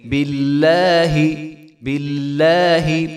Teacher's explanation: یاد رہے یہاں پہ جو ہے لفظ اللہ کا لام بریک ہوگا کیونکہ با کے نیچے کسرہ ہے